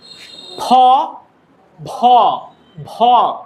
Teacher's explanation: দুই ঠোঁট একসাথে করে ফ এর মতো করে উচ্চারণ করতে হয়